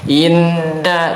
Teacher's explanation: Adapun yang keluar dari khayshum itu bukan mimnya, bukan hurufnya, tapi gunnahnya atau dengungnya.